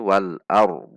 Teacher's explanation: Lidah kita langsung di titik dhad karena huruf dhadnya disukunkan.